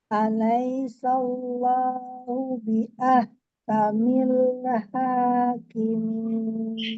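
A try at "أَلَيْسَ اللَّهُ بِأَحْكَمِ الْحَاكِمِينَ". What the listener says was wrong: Ya, kamil hakimin. Ya, nggak usah ditekan sih sebenarnya lamnya kamil hakimin, mil hakimin gitu ya. Iya, ringan kan ya, nggak usah mil atau mil ha. biasanya nun, lam tuh yang sering kalau misalnya kita sukun dia ngikut milah, mina, ke bawah, mina, mila gitu ya.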